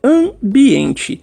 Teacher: quando eu usei esse an, que são palavras mais nasaladas, percebam que você sente ela meio que no nariz